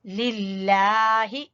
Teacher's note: لفظ اللہ کو باریک پڑھیں گے اور کھڑی زبر کی وجہ سے لام کو لمبا کریں گے